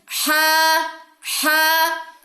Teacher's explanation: وسط حلق سے یہ ادا ہوتا ہے، یعنی کہ آپ کے گلے کے درمیان سے، ہا ہا۔ نیکسٹ لیٹر ہے ہمارے پاس خا۔